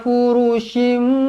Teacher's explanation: mim kecil, ekornya ke bawah bertemu dengan ba, iklab. Dibaca dengung dua harakat